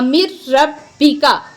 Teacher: तो इदगाम का माना मैंने आपको पहले भी बताया था कि एक हरफ को दूसरे हरफ के अंदर मुदगम करना, मिला देना। मुदगम करना और मिला देना, यानी नून को रा से मुदगम कर दिया, यहाँ नून को खत्म कर दिया। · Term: इदगामे बिला गुन्ना